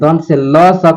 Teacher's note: ल स का उच्चारण स्थान दंत हो जाएगा, ल स का उच्चारण स्थान दंत।